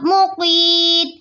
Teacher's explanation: یا ساکین ہے، اس سے پہلے والے حروف کے نیچے زیر ہے تو یہاں یا مدہ بنے گا. یا مدہ کے بعد تا کا سکون عارضی آ رہا ہے، یہاں مد عارض وقفی بنے گی جسے ہم 3 الف کے برابر کھینچ کر پڑھیں گے